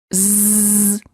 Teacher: you should feel a vibration in your vocal cords this is how you know that the z sound is voiced